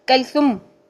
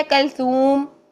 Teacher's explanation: कलसूम सू 2 हरकत लंबा करके ही होता है। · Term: वाव मद्दा